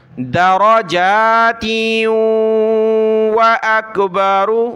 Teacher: تا کو آگے واو کے ساتھ ملا ہے، ناک میں آواز پیدا کی